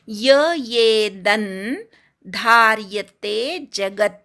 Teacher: खूप जण नुसता एचा उच्चार करतात, जो चुकीचा आहे. तिथे यचा उच्चार पण ऐकू आला पाहिजे. येदन धार्यते जगत, द वरच्या अनुस्वाराचा अर्धा न म्हणायचा, धार्यते धा पूर्ण म्हणायचा, शेवट जगतचा त अर्धा आहे.